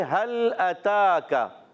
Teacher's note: एक अलिफ खींच कर अदा करेंगे काफ को बारीक पढ़ेंगे अच्छा काफ का मखर जबान की जड़ और तालू का सख्त हिस्सा · लिमा युरी हल जन हल जनद हल हा पर जबर है हा को लाम से मिलाना है मगर लाम को हिलाना नहीं है